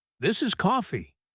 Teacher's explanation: the customer had put a huge amount of stress on the word coffee. Daniel did not realize that the customer was using contrast.